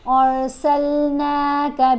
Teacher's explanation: یہاں را کو موٹا پڑھیں گے کیونکہ الف کے اوپر زبر ہے